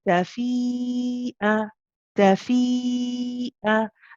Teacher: Now here you have the mud, and it has a hamza after it. This is again mud wajib muttasil. It's 4 to 5 counts long again, this mud. Okay, it's a longer mud.